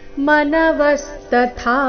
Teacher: ಇಲ್ಲಿ ತಥಾ ಇದೆ ಮೊದಲು ಅಲ್ಪಪ್ರಾಣತ ನಂತರ ಮಹಾಪ್ರಾಣಥ